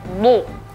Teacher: Huruf dhad itu tebal, bukan dal yang ditebalkan. Bukan du, tapi du.